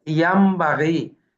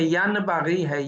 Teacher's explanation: تو اس کو میم سے بدل دیا جائے گا، نون ساکن اور نون تنوین کو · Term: اقلاب